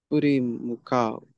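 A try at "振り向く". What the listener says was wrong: Ka is not over the kanji. The kanji is still only mu.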